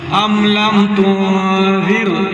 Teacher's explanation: یہاں پر را کو بری کرنا ہے، را ساکن ہے اور اس سے پہلے زیر ہے